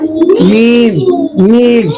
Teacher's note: और खुश्क होंठ से निकलता है मीम।